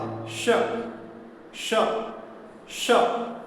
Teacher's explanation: तो इसी तरह इसका उच्चारण हमें एक अभ्यास करना होगा। श अनुभव कीजिए जीभ का मध्य भाग तालु में सट रहा है